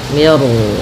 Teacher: di sini mi-nya tipis, ro-nya tebal. Nah, di sini namanya ro tafkhim.